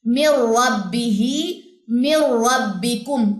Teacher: یہاں پہ ادغام تام بھی ہے کیونکہ نون کی آواز باقی نہیں رہے گی